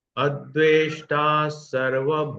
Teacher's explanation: ना के ऊपर जो अनुस्वार है वो अनुस्वार म का उच्चार, आधा म का उच्चारण होगा, क्योंकि उसके आगे म ये व्यंजन है।